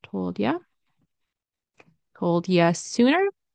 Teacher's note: the d and the y sound turns into j